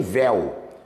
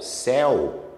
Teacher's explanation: o A, E, O é vogal e o U é semivogal. Ditongo decrescente.